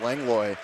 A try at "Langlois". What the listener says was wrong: Langlois. I think he pronounces the S. Like, it could be either way, but I think it's Langlois.